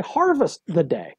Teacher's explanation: stressed, unstressed, unstressed, stress